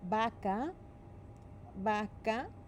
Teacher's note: That's why we call it the BV sound. Because it is a soft letter B where the lips barely touch